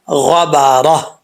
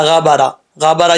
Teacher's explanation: Last پہ ہا کا ساؤنڈ آنا لازمی ہے، ہا کی آواز کا آنا لازم ہے۔ ایسا نہیں پڑھنا غبارہ، غبارہ یہ غلط ہو جائے گا۔